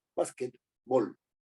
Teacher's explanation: Y se acentúa en bas, ¿no? Básquetbol, es un esdrújulo, ¿no?